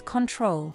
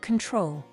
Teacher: the first O letter is reduced in the first syllable of the word control. So it is not pronounced as control, but control.